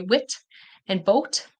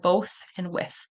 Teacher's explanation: they'll pronounce the T instead of the voiceless th